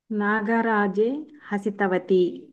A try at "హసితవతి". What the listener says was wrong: హసితవతి అని అనాలి. అతి అని దీర్ఘం తీయకూడదండి, కొంపలు అంటుకుపోతాయి.